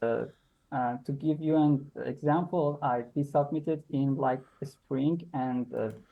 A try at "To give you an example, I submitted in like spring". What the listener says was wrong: again, pronunciation has just gone a little bit staccato. Just notice it just a little bit. The little bit choppy like this. Just a little bit. Notice.